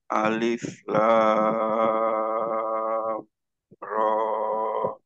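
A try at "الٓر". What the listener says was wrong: Ya, ro-nya 2 harokat saja. Alif lam ra. Cukup.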